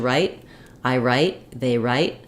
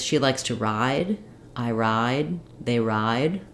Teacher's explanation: I have an unreleased T sound, but the way you know it's a T and not a D is that that vowel is pretty short.